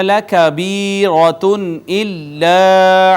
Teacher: نون تنوین کے بعد آ گیا حمزہ، لہٰذا یہاں پر اظہار ہوگا ، حمزہ حروف اظہار میں سے ہے، الف المدہ، الف المدیہ